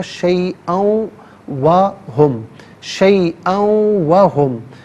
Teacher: شیئا میں حمزہ پر 2 زبر کی تنوین ہے، اسے واو کے ساتھ ملائیں گے، واو کی آواز کو غنّے کے ساتھ ادا کریں گے